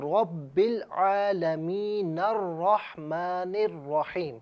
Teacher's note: عالمین کا جو آخر میں نون ہے، نون کو را کے ساتھ ملا کر پڑھیں گے ملانے کی صورت میں، لیکن علیحدہ پڑھا جائے تو اسے الرحمن الرحیم پڑھا جائے گا.